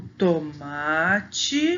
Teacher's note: No tomate, a sílaba que a gente fala mais forte é a penúltima sílaba, que é o má.